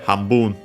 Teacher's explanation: But yeah, would be accent on the last mora. Hambun on the last syllable at the very least.